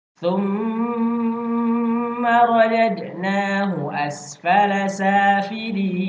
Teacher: ada mim bertasydid. Harus didengungkan selama 2 harokat gunnah. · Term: gunnah musyaddadah